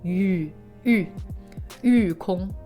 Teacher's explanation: Fourth tone and then first tone. · Just try to keep it to the oo. Instead of doing the u sound where the oo vowel sound closes up at the end, just hold it. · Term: oo sound